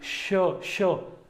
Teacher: जो हमारी जिह्वा है वो तालु से मिल जाती है और वहीं अवरुद्ध होती है, लेकिन फिर एक मुख से बाहर एक ऊष्मा के रूप में वो बाहर निकलती है, उसे क्या बोलते हैं हम? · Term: ऊष्म व्यंजन